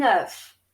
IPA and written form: œf (oeuf)